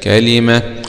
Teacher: ووقف عليها بإمالة هاء التأنيث الكسائي